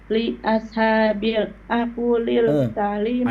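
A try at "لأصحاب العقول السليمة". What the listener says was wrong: Ainnya dhammah.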